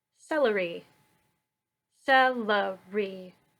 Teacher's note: we put the emphasis on the first syllable stressed unstressed unstressed